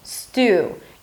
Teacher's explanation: So bring your lips forward at the end. Imagine like you have a little W.